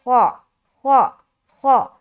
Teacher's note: خا چونکہ موٹے حروف میں سے ہے لہٰذا اسے گول کر کے ادا کرنا ہے